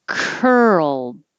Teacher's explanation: ow mouthful that's a mouthful curled so this is the earl you're going from an r position to an l position so you keep moving your tongue and you make sound the whole time and an earl will happen curl i don't say the d